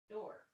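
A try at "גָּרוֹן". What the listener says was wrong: Garon. Garon. Garon, that's a nun The nun sofit is pronounced. The reason that's not a dalid is because it has no tail at the top, right? It's just one swoopy thing. The one swoopy thing is a rush because rush sounds so swoopy, right?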